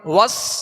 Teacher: سین کو سختی کے سیٹی کی آواز میں اور باریک پڑھیں گے